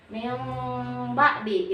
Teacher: Nun sukun bertemu ba, suaranya berubah dari nun menjadi mim. Tetapi membunyikan mimnya itu karena harus masuk ke hidung, maka tidak perlu ditahan, ditekan lebar, ditekan kenceng-kenceng. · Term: iklab